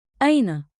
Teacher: Keep it rising at the end, curious, friendly.